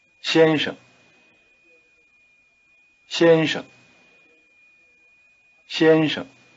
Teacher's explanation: with the tongue curled back try repeating mr. changin changin changin your tongue has to shift gears so to speak between the two syllables it's forward for the first syllable chin and retracted for the second